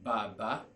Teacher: The first one is low pitch. The second one is high pitch. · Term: low tone